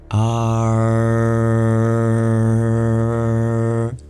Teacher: you curl your tongue back called retroflex You're flexing backwards retro you'll notice it picks up an rlike sound but it's still a vowel are and you can hold it there that's not enough to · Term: vocalic R